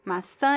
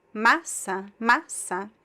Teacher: The only difference between these two words is the nasal sound, right? The nasal vowel. So the first one, the stress goes all the way to the end.